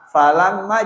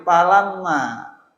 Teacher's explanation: Terus orang Sunda kebanyakan fa jadi pa, falamma jadi palamma